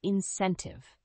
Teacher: The fifth word is incentive. The word incentive has three syllables with the stress on the second syllable.